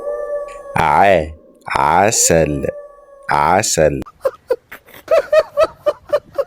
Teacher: Squeeze the middle of your throat. It's a deep, constricted sound.